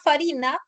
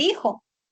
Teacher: la fricativa labiodental sorda, o sea, el sonido de la F, se dejó de pronunciar en algunas palabras. Por ejemplo, la palabra farina pasó a ser harina.